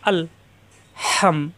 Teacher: কণ্ঠনালীর মাঝখানে চাপ দিয়ে হা মিলবে আবার মিমের সাথে। হাম সাকিনের অক্ষর রেখা পড়া যায় না। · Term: হাজাবার হা